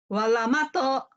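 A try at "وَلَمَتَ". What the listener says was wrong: nggak ada yang panjang.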